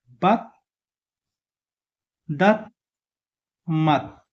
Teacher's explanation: दु फाइनल पोजिसनमा आयो भनेपछि आधा त साउन्ड गर्छ